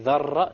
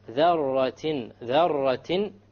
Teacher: You make sure there is no rolling of the R.